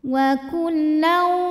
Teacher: maka tanwin fathah dimasukkan ke waw wa kullau sambil ditahan didengungkan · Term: idgham bi gunnah